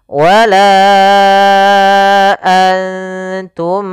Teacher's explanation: Pada lafal la kembali lagi kita dapati hukum tajwid berupa mad jaiz munfasil yaitu ditandai dengan adanya huruf hamzah yang datang setelah huruf mad di sini huruf alif. Maka kita panjangkan untuk huruf la sepanjang empat harakat. Dan kita namakan di sini hukum tajwidnya mad jaiz munfasil empat harakat.